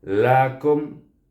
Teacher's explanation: dia matikan dengan huruf mim, bunyinya kum. Dan Dia tidak boleh dipanjangkan kerana dia izhar syafawi.